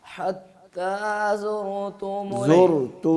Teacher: را کی آواز کو روک لینا ہے جب تک تا کی آواز شروع نہ ہو